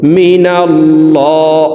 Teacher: আল্লাহ শব্দের আগের হারফে জবর আছে এ কারণে এই লামকে অর্থাৎ মোটা করে পড়তে হবে